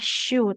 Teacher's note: Tengah lidah menempel ke langit-langit atas